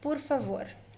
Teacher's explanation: the first syllable can be a little bit closed.